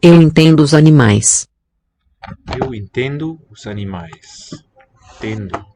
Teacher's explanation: Not a real N there in syllable 2.